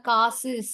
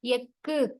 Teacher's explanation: சொல்லோட இறுதியில வரும்போது மட்டும் ஒரு மாத்திரைக்கு பதிலாக அது அரை மாத்திரை அளவு குறைந்து ஒலிக்கும். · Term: குற்றியல் உகரம்